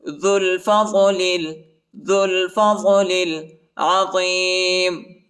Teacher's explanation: واللہ ذو الفضل العظیم، واللہ واللہ واللہ ذو الفضل ذو الفضل، ذال کو لام کے ساتھ ملائیں گے، وہ اور الف نہیں پڑھا جاتا، وہ اور الف کے اوپر حرکت نہیں ہے، اور لام کو لام کے ساتھ ملائیں گے، الف نہیں پڑھا جاتا، الف کے اوپر حرکت نہیں.